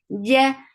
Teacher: no flow of breath here. It is shidda letter. Ja, ja. If you let the sound flow or let the breath flow, then there will be ch sound.